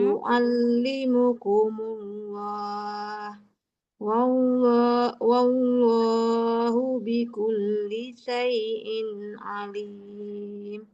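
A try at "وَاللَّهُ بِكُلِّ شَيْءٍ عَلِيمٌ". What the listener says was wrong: Boleh diulang Ibu di wakaf terakhir, jangan wawullah ya. Karena waw setelah huruf waw langsung lam tebal, bukan waw lagi. Jadi bukan wawullah tapi wallah, wallahu. Allahu. Nah, jadi bukan wawullah ya. Tidak setelah wawunya tidak waw lagi, tapi setelah wawunya lam tebal. Wallahu bikulli syai'in alim.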